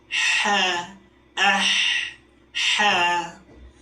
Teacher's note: Huruf ha memiliki sifat yang pertama adalah alhams, yaitu keluarnya udara.